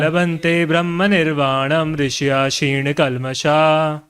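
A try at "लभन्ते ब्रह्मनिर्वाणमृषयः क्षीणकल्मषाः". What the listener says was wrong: छी नहीं, ची ची लभन्ते ब्रह्म निर्वाणम ऋषयः क्षीण कल्मषाः।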